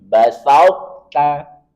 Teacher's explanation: Dibaca langsung ke ta, tetapi tetap menampakkan sifat isti'la di arah dorongan ke atas. Seakan-akan kita mau mengucapkan po, tetapi kemudian yang keluar ta.